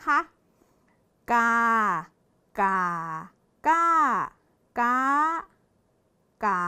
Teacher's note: พื้นเสียงของอักษรกลางคำเป็นคือเสียงสามัญนะคะเด็กๆ ตรงนี้นะคะและผันได้5เสียงครบ